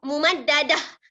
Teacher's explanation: Bila berhenti, dia menjadi huruf ha. Bunyinya akan bertukar kepada bunyi huruf ha. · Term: ta marbutah